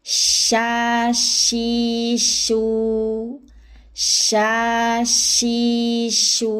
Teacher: Huruf shin yang digunakan adalah tengah lidah, tidak dibantu bibir jika tidak berharokat dhamma. Sya bukan sya ya, atau bukan sya, tapi sh, tengah lidah dinaikkan.